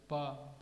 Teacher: बा बोलने में दोनों ओठ मिल रहे हैं, तो ओष्ठ ध्वनि है।